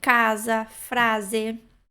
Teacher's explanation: E o S entre 2 vogais tem som de Z